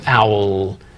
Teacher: not really a hard L like you would find at the beginning of a word it's sort of owl so what I'm going to do is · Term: a very subtle l